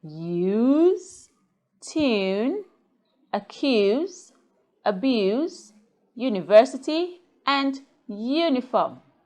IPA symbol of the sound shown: j